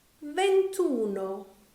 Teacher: because there are too many vowels we've dropped the final I the final vowel of the first part